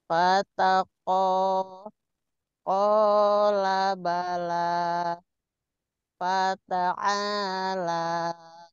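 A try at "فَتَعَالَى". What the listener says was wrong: Hati-hati kepanjangan. Fata'ala. Dari kola. Kola bala fata.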